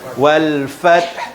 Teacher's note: Wal fath, kena ada angin kat belakang. Wal fath, kita nak sebut ha tapi kita tahan sikit, bunyi angin je